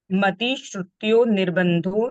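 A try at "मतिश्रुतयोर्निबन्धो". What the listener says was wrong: क्योंकि जो ये र की मात्रा है ना, वो ब पर नहीं है, न पर है, तो वो य के साथ जुड़ेगी, योर निबंधो ऐसा आएगा, है ना। योर निर्बंधो ऐसा नहीं है, योर निबंधो, निबंध शब्द आएगा।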